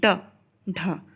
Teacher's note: यह पहले मुर्धा को टच करता है ऊपर फिर झटके से नीचे आता है ड ढ बोल के देखिए ढ झटके से नीचे आ रहा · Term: द्विगुण व्यंजन